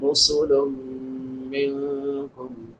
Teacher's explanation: لام پہ نون تنوین ہے، بعد میں حروف یرملون میں سے میم ہے، تو ادغام مع الغنہ ہوگا. نون ساکن کے بعد حروف اخفا میں سے کاف ہے، تو یہاں پہ اخفا ہوگا.